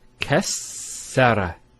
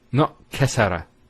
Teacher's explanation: So it's very important with the shadda to give it the double sound. And sometimes people might be a bit too hasty and not give that double letter.